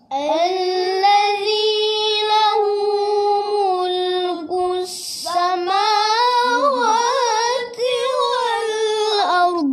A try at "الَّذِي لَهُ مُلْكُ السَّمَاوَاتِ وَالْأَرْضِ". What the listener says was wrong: Tinggi tak? Tinggi lah. Rendah sikit Itulah ayah cakap tadi dia hilang ki الذي له ملك السماوات والأرض Alladhi yang rendah je.